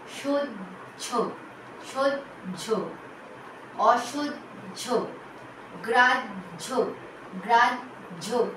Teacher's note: শব্দের শেষে যখন হ থাকবে এবং তার সঙ্গে হয় জফলা থাকছে তখন কিন্তু উচ্চারণ হবে জ ঝ, জ ঝ, বর্গের জ, ঝয় করে ঝ।